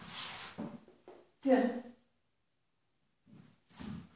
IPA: d